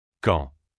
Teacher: Il faut le prononcer comme un K. C'est un son explosif qui doit être bien marqué.